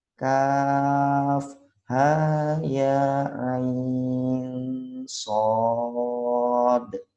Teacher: Shad karena diakhiri huruf dal dipantulkan qalqalah.